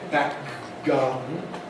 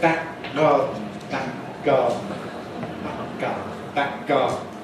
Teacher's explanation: This is like good day. We don't release the first k. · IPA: [ˈbæk̚ ˈgɑːdn̩]